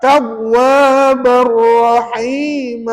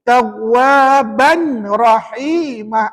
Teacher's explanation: tanwin tadi jangan bunyi, sebaliknya terus masuk dalam huruf ra